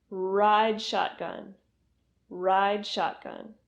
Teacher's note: So when you're saying this phrase, make sure you're pulling your tongue back and pushing your lips forward to make the R sound in ride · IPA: /r/